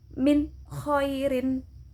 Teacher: jelas nun matinya terbaca dan kha-nya terbaca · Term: idhar